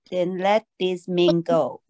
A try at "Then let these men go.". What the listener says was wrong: Yes, good job. Good job.